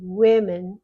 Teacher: even though that's an O, we pronounce it as though it were a short E. Women, or even a short I.